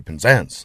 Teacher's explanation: The first syllable is scarcely heard.